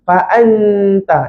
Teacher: hujung dia saya sentuh belakang gigi atas, nanti akan dengar bunyi nun yang jelas